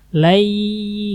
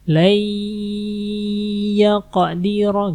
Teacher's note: Yang digunnahkan yang ini nih, nun mati ketemu dengan huruf ya. Masukin ke ya.